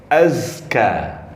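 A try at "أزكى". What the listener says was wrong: Za-nya lebih jelas. Za makhrajnya di mana? Ujung lidah di antara atas dan bawah.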